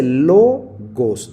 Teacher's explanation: Aquí dice logos, no dice logos, porque el acento no aparece sobre la última sílaba, sino en la penúltima. Logos. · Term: paroxitona, paroxítona